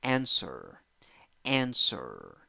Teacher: two syllables the first syllable is the stressed syllable